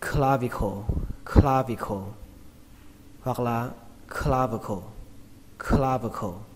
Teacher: Từ này trọng âm của nó rơi vào âm đầu tiên, âm kla, kla. Chữ la trong từ la hét, kla.